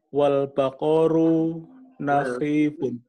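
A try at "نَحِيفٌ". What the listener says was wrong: Ya, nahifun jangan pakai kho ya. Nahifun. Pakai ha.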